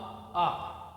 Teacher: जब हम आ बोलते हैं तो बोलने में हमारा जो मुख होता है वो खुला हुआ होता है। मतलब न तो जीभ चलती है, न जबड़े चलते हैं, न ओंठ आपस में मिलते हैं, न जीभ दांत में जाती है। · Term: कंठ